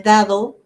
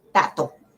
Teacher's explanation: se omite el fonema d o se sustituye por el fonema t